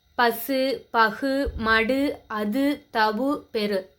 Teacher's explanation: தனக்குரிய ஒரு மாத்திரை அளவிலிருந்து குறையாத உகரம் முற்றியலுகரம். அதாவது தனக்குரிய ஒரு மாத்திரை அளவில் முழுமையாக ஒலிக்கும் உகரம் முற்றியலுகரம். இது எங்கே இடம்பெறும் அப்படின்னா, தனி குறில் எழுத்தை அடுத்து வரும் வல்லின உகரம் தனக்குரிய ஒரு மாத்திரை அளவில் முழுமையாக ஒலிக்குது.